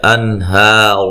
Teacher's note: نون ساکن کا اظہار ہے، غنہ نہیں کریں گے